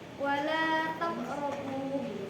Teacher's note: Karena huruf qalqalah berada di tengah kalimat, maka qalqalahnya dibaca lebih ringan. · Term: qalqalah subro